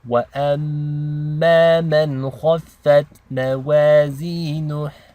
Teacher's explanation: the noon is not read with ghunna because it's followed by a kha, which is one of the letters of the throat. So this is called izhar.